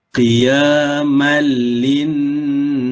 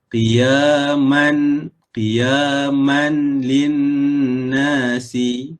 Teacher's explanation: Ini namanya idgham bila gunnah. Memasukkan huruf mim ke dalam huruf lam tanpa dengung.